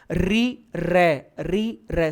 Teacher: मसूड़ों से जीभ टकरा रही है। देखना ऋ र ऋ र सेम है। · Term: मूर्धा